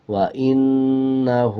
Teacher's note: الٹا پیش کا مطلب ہے جب کسی الفاظ کے اوپر اس طرح والا الٹا پیش آ جائے تو اس الفاظ کو 1 سیکنڈ لمبا کر کے پڑھا جائے گا۔ جیسے یہ ہا کے اوپر الٹا پیش ہے وَإِنَّهُ، 1 سیکنڈ لمبا کر کے پڑھیں گے